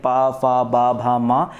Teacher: ये जो होते हैं आपके ओष्ठ है, देखिए ओठों के माध्यम से बोले जाते हैं। पा फा बा भा मा ओष्ठ्य व्यंजन होते हैं।